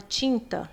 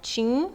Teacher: na palavra tinta esse n ele tá nasalizando o i É como se você escrevesse assim ó TIM tá certo a